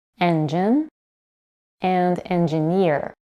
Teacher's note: When the suffix ear is added, primary stress shifts to the suffix itself.